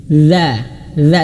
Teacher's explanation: Dzal itu makhrajnya ujung lidah berada di antara, mohon maaf ujung lidah menyentuh ujung gigi seri atas